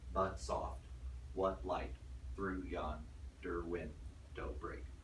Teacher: in iambic pentameter you got unstressed stressed unstressed stressed unstressed stressed all the way through for ten days but soft what light